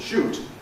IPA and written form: ʃuːt (shoot)